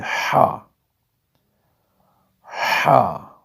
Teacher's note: بغیر نقطے کے ہا حروف حلقی میں سے ہے، صاف آواز میں صاف وائس میں صاف سانس میں ہم ادا کریں گے ہا، ہا۔